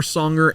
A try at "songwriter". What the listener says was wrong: Did you say singer, songer? Oh, it sounded like you said songer. I was like, what's that?